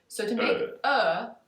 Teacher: this o sound oh you just relax everything about 60% right it's not woo anymore but the lips relax